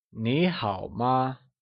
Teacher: It is said using a mid-rising tone for 你 and a falling rising tone for 好 and a neutral tone for the question particle ma